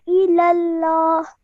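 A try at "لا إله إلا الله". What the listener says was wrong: Remember not to elongate the la because it simply has a fatha, and elongate this a little bit more, this lam, elongate it a bit more because of the vertical fatha. La ilallah.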